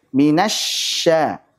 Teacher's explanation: huruf shin punya sifat hams dan rokhawah. Maka berikan sifat rokhawah dan hamsnya, mengalirnya nafas dan mengalirnya suara. Minasya dialirkan.